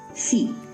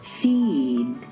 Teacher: the preceding vowel is said more slowly and on a double stair step.